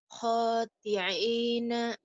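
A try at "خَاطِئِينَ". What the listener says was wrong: khodi, bukan khotiin ya, khodi'in. Khodi'ina,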